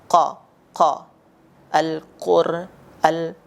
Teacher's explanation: Pangkal lidah paling belakang pada posisi menempel langit-langit bagian yang lunak. Nah, atau daging paling belakang setelah tenggorokan. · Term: huruf qaf